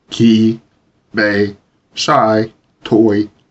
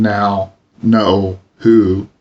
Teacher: with the tongue moving back and up and the lips rounding